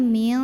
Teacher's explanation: ikhfa karena ada nun sukun yang bertemu dengan huruf qaf maka cara baca Nun sukunnya ini adalah samar-samar siap-siap ke huruf qof disertai dengungan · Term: hukum ikhfa